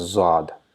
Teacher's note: In Urdu or in Farsi, this is pronounced as Zad, and they just directly pronounce Z.